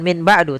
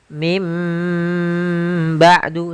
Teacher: Contoh lagi, misalkan min ketemu dengan ba'du, maka kita bacanya dengan bukan min ba'du, tapi mim ba'du sambil ditahan dengan gunnahnya. yaitu suara nun yang dirubah menjadi suara huruf mim. Jadi iqlab itu merubah suara huruf nun menjadi suara huruf mim.